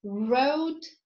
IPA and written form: rəʊd (road)